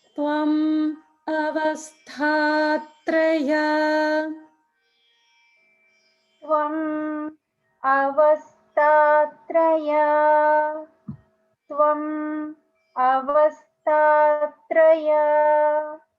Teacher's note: Just notice how in Avasthatraya, the A doesn't go down. It's the same middle note.